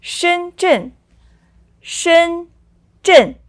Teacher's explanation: so that's the first and the fourth tone